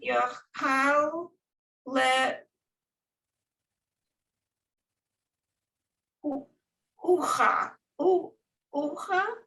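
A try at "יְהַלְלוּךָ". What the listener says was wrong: So you broke the syllables in the wrong place. Yehallelujah. Yehallelujah. Lilu. So these two laments go all the way, you go to here. Lilu ha.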